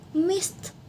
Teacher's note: Since the final sound of the verb is voiceless, the suffix becomes voiceless too.